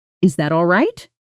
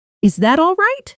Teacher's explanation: Your voice climbs on the last word. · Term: Rising